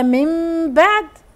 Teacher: اقلاب نون وبعدها باء بنقلب النون لايه لميم